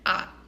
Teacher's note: fourth tone is the falling tone